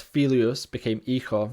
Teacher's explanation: Then there's also the loss of the initial F in Latin